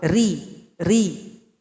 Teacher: dibaca tarqiq atau dibaca tipis artinya huruf ro dibaca tipis Adapun kondisi lidah ketika membaca huruf ro tarqi ini pangkal lidah tidak naik ke langit-langit